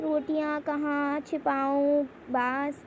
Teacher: इन शब्दों का उच्चारण नाक व मुंह दोनों से किया जाता है और इन्हें लिखने के लिए चंद्र बिंदु का प्रयोग किया जाता है। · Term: अनुनासिक